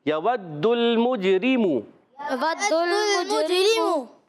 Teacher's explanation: دال کی پیش کو لام سے ملانا ہے، لام کو ہلانا نہیں ہے، اور میم جیم پیش مجھ، یہاں کلکلا کریں گے جیم میں، ٹھیک ہے، کلکلا ہوگا، آواز لوٹ کر آئے گی۔ را کے نیچے زیر باریک پڑھیں گے